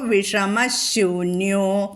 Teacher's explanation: വിഷമഹ അവിടെയും അവിടെ എന്താണ് വിഷമഹ കഴിഞ്ഞിട്ട് ശൂന്യഹ എന്ന് വന്നതുകൊണ്ട് ഷ വന്നതുകൊണ്ട് വിസർഗം കഴിഞ്ഞിട്ട് ഷ വന്നാൽ ശ്ലോക പാരായണ സമയത്ത് ഷ എന്ന് ഉച്ചരിക്കുക വിസർഗ്ഗ സ്ഥാനത്ത്